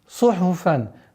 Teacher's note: Сад свистящий звук. Ха гортанный, фа фрикативный.